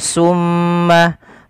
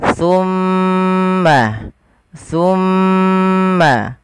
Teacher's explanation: makhrajnya ujung lidah ujung lidah kita menempel dengan gigi seri atas kita